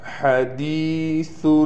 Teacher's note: اتاک حدیث الغاشیہ، یہاں پر ہا کو صاف طور سے گلے سے نکالا جائے گا۔ حدیث سا کو بھی نرمی کے ساتھ نکالیں گے، کہیں سا ہم سے سین نہ بن جائے۔ حدیث الغاشیہ، غین کو موٹا کر کے پڑھیں گے۔